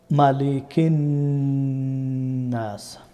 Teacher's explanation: নুনের মধ্যে আমি নাকের বাঁশি দিয়ে আওয়াজটাকে লম্বা করলাম, এটার নাম হচ্ছে গুন্না।